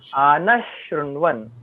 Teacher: Visarga is followed by Sh. This is Sh. Sh. That is why we will pronounce this Visarga as Sh.